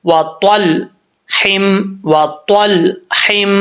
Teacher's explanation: لام کے اوپر، لام کے مخرج میں جب زبان جائے تو وہیں پہ جم جائے، پھر آگے سے حرف جو ہے وہ ہا نکلے۔